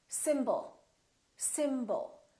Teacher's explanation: The first syllable is stressed. And the second syllable is reduced. When we have a reduced vowel, we don't pronounce it fully.